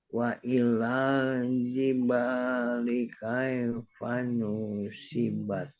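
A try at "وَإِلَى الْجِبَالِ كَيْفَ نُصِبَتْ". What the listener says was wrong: Nah, tinggal nu-nya jangan panjang. Yang lain bagus, nu-nya jangan panjang. Nusibat jibali kaifa nusibat. Nu jangan panjang. Kaifa nusibat.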